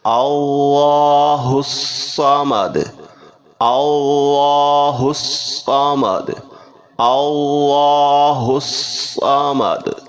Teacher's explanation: 2 الف اور لام خالی آتے ہیں، یہ حروف شمسیہ ہیں، یعنی کہ یہ نہیں پڑھیں جائیں گے، ہاں سیدھا صاد کے ساتھ ہم ملا کر پڑھیں گے تشدید والا حرف کے ساتھ، تو لفظ بنے گا اللہ آگے صمد، ہم ملا کر پڑھتے ہیں، پورا لفظ بنے گا اللہ الصمد، اللہ الصمد، اللہ الصمد۔